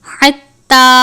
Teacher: تا کے اوپر تشدید بھی ہے اور کھڑی زبر بھی ہے، سختی سے پڑھیں گے اور الف کے جتنا لمبا کریں گے